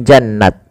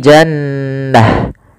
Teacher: dia rubah atau dirubah menjadi huruf ha sukun maka menjadi jannah bukan jannat tapi jannah ini sebuah kaidahnya kaidah ta marbutah itu adalah diganti dengan ha ketika dia di akhir Bacaan hum fiha kholidun.